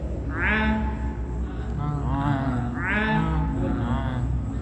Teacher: ketika prakteknya a, dia lidahnya pangkal lidah menyentuh langit-langit dulu kemudian turun. A. Nah, akan kelihatan banget ketika disukunkan tadi.